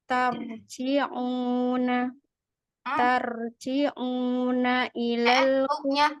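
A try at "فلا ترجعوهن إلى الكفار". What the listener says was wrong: Huknya ketinggalan. Tarji'u, 2 harokat dulu, tunaikan dulu ainnya dhammah, keluarkan dari al-khayshum. Tarji'uhunna ilal kuffar.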